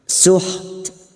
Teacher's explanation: huruf ta yang memiliki sifat hamas dan syiddah